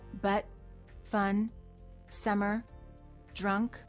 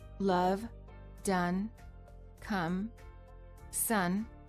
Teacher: the lips are completely relaxed and just slightly parted the tongue is also very relaxed and in the middle position